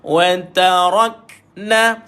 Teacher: matikan kaf ada sifat hams ataupun angin keluar padanya